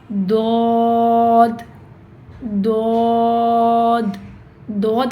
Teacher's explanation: آپ کے زبان کے کناروں سے ادا ہوتا ہے۔ آپ کی زبان کی جو سائڈز ہیں، آپ کی زبان کی چاہے وہ دائیں سائڈ ہے یا چاہے وہ بائیں سائڈ ہے، یہ آپ کی سائڈ کے جو دانت ہیں، جو مطلب جو داڑیں ہیں، اس کو لگنی چاہیے آپ کی زبان۔